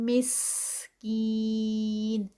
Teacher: counts, طعامل، تو heavy اور عین پہ 2 کاؤنٹس، طعامل مسکین، سین کی بسلنگ ساؤنڈ اور پھر کین پہ 4 کاؤنٹس